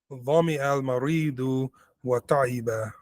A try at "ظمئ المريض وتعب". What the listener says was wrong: Don't separate wow and that which comes after it.